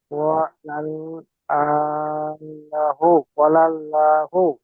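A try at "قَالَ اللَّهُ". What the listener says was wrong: লা বলবেন না, কলাল্লাহু। লাহু বলবেন না, লহু বলবেন, ঠিক আছে? এখানে আল্লাহ শব্দের আগে জাবার আছে, তাই এই লকে, এটাকে লা বলবেন না, এটাকে ল পড়তে হবে পুর করে, মুখ গোল করে, কলাল্লাহু। যদি আপনি লাহু পড়েন তাহলে আপনার গালটা ফেরকে যাবে।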